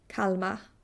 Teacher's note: you barely pronounce the R at all, a little bit in a German way. Kalmar.